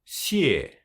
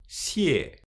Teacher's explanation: It is like a S in English, but pronounced with the dorsum of the tongue and not the tip. 谢. The trick is to put the tip of the tongue behind the lower teeth. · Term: X in pinyin